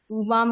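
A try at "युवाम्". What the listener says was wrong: উবাম না, বলুন বলুন ইউ। ইউ বাম, ইউ বাম, ইউ বাম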